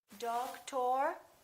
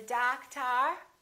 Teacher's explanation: we stress the first syllable we reduce the second